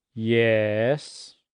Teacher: That is the third tone in Chinese. A falling rising tone, the exasperated teachers tone.